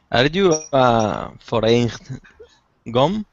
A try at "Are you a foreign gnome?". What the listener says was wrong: Uh-oh. It's silent. The G is silent.